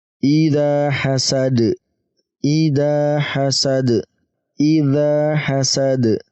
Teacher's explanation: Di sini juga sama ya, di akhir ayat. Maka masuk qalqalah kubra. Ya, kita pantulkan huruf dal ini.